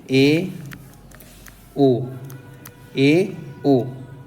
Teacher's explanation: आएंगे दोस्तों अर्ध विवृत में अब आते हैं अर्ध सम्रत में अर्ध माने आधा सम्रत माने चिपका हुआ यानी कि मुख आधा चिपका हुआ